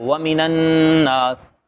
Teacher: اچھا، اسی طرح اسے اگلے رکوع میں اگر ہم دیکھیں تو وَمِنَ النَّاسِ، تو یہ نون مشدد ہے، اس کے اوپر شد ہے، تو اس شد کے آنے کی وجہ سے نون کے اندر غنہ ہوگا